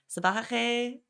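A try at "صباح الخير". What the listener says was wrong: You have to pronounce the R at the end.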